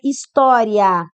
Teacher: Você está do I, que é baixo, e você está subindo para o A, de tom crescente. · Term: ditongo